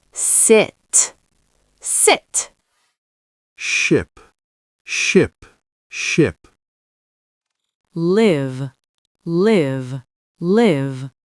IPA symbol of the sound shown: ɪ